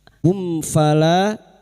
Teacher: Mim sukun bertemu fa, idhar syafawi. Mim sukun dibaca dengan jelas tanpa bersenandung.